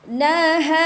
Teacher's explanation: Tebalkan ra tu di hujung sahaja. Jangan terus tebal ha tu.